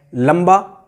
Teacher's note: बा के पहले अनुस्वार है तो भी माँ आ रहा है